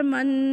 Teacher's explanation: یعنی ناک کے بانسے تک اس کی آواز لے کے جانی ہے اور واضح آواز غننے والی نکالے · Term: غنہ